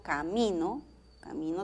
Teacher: camino tiene acento en la segunda sílaba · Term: el acento